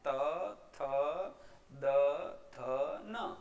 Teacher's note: જ્યારે જીભ દાંતને સ્પર્શે છે અને હવાને રોકે છે અને જેનું ઉચ્ચારણ થાય એવા વ્યંજનો દંત્ય વ્યંજનો છે